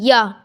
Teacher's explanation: इनका उच्चारण जीभ, तालु, दांत और होठों का परस्पर सटाने से होता है, किंतु कहीं भी पूर्ण स्पर्श नहीं होता। मीन्स जब हम इन्हें बोलते हैं तो जीभ पूर्ण स्पर्श नहीं करती है, ना ही हमारे तालु को, ना दंत को, ना जीभ को। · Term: अंतःस्थ व्यंजन